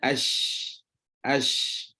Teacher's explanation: huruf hams, ada angin pada huruf shin contoh